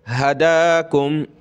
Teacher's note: हा, दाल खड़ा ज़बर दा, हदा, काफ मीम पेश कुम, हदाकुम, एक अलिफ की लिमिट में खींचेंगे दाल को ऊपर